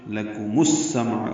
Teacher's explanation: میم کو السمع کے سین سے ملائیں گے، ادغام شمسی ہوگا